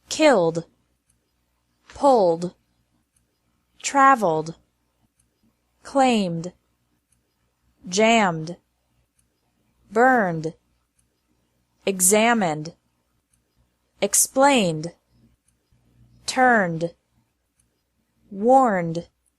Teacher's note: Ed is pronounced like D after verbs ending in an L, M or N sound.